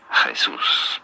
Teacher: you do want to stress on the second syllable that's what the accent on the means here Jesus pretty straightforward